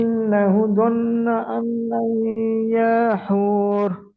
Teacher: নুনের উপরে তাসদিদ আছে, এটা অজীব গুন্না